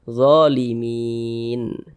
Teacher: Huruf nun tidak dibaca panjang, makanya kita sukunkan atau kita matikan sehingga dibaca zalimin. Jangan dibaca zalimina, jangan.